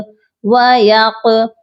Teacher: قاف پر ہم قلقلہ کریں گے، قاف ساکن ہو رہا ہے